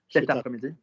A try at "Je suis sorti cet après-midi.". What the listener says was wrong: And again, all joined. Je suis sorti cet après-midi. No pauses.